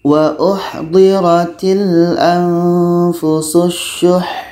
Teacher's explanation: Jadi di sini ha ini menjadi mati. Ha mati ini sifatnya hamas atau berangin.